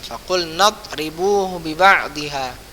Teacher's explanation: Dot bukan qalqala, jadi matikan huruf dotnya dengan cara lidah antum mengenai makhrajul huruf dot